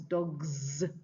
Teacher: a voiced consonant like g dog plus s becomes dogs. Not dogs s but dogs.